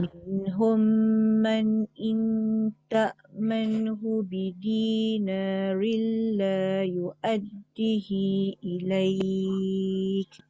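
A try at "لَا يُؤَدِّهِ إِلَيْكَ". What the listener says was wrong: Yu'addihi panjang.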